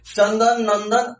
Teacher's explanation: जैसे बोलेंगे चंदन तो उसमें नाक जो है नसिका का उपयोग कर रहे हैं। अगर हम नाक बंद करके ऐसे बोले कि चंदन तो बोला नहीं जाएगा ठीक से। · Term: अनुस्वार